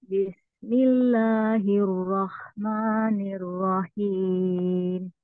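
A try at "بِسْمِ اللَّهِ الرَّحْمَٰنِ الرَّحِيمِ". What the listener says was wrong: Coba ro-nya jangan monyong. Rohim, rohim.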